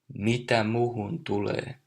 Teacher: you can hear the I and N dropping